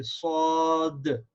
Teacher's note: Dal sound at the end of Sad with Qalqala